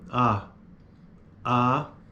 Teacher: a vogal a segundo esta tabela que está no livro dela é uma vogal baixa